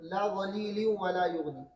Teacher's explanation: اسی طرح فی لا غلیل ولا یغنی، لا غلیل ولا یغنی، یہاں پر بھی ادغام تام ہے، یہ بھی خلف کے لیے نون ساکن یا تنوین کے بعد واو اور یا آنے کی صورت میں خلف ادغام تام کرتے ہیں، غنہ نہیں کرتے ہیں